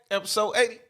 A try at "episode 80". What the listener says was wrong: Episode what? You said 80? You took us all the way back to the beginning. You sound like you like 8.